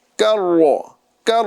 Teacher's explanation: کاف کو باریک کرنا ہے، را کو پر کرنا ہے